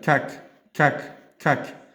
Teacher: Bu yerda kak, kak bu aslida G edi, lekin endi K ga o'zgaradi.